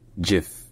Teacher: avec un J déjà et avec un I qui est un i court et non un i long qui est très différent du I français qui se prononce plus